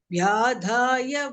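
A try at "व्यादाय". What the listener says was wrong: when it is alpa prana, lot of places you are actually chanting mahaprana, right? Vyadaya, it is not vyadhaya, there is no mahaprana there. This da is alpa prana.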